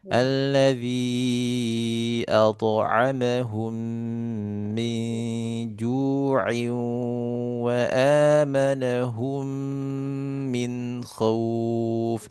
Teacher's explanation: di alladzi at'a tebal ya, pantulannya ikut tebal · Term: pantulan tho'nya